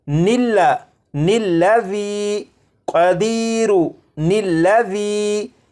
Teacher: ان دونوں الفاظ کو آپس میں ملانے کے لیے ان کے درمیان ایک نون کا اضافہ کریں گے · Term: نون قطنی